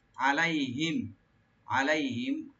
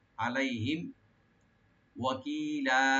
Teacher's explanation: আর মিম সাকিন এখানে জাহার করবেন